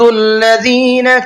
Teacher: ما يود الذين كفروا من أهل الكتاب ولا المشركين يود الذين، ذال کو نرمی کے ساتھ میں پڑھنا ہے اور سافٹ کر کے پڑھنا ہے۔ ذال کے پروناؤنسیشن میں اس کے مخرج میں سیٹی نہیں ہوتی ہے